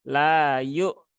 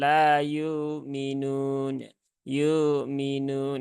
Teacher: Hamzah ini harus dijelaskan ya harus ditahkikkkan